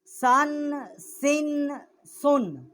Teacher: زبان کی نوک جب ثنایا علیہ کے سرے سے ٹکر کھاتی ہے تو اس سے یہ تین حروف جو ہے ادا ہوتے ہیں